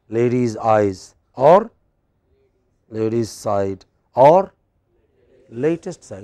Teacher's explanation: Stress on the first syllable, then they are both two syllable words, bisyllabic. They have both only two syllables.